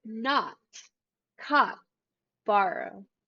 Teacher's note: the wide and spreaded shape of the american accent will make this o sound more like an a